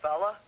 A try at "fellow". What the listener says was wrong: Saying fella instead of fellow is incorrectly changing sounds within words.